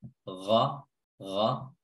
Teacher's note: Ya, cara menebalkan huruf ghain adalah bukan dengan bibir yang bulat, gha, ghaibi, ghaibi, tidak. Bibir tetap terbuka ke atas, tidak dibulatkan